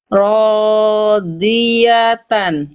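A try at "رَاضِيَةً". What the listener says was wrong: Oke, nanti tinggal dilatih. Udah bagus sebenarnya. Cuman belum kadar maksimalnya Bunda, saya yakin.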